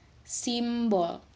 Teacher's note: pengucapannya sedikit tertutup karena diikuti oleh konsonan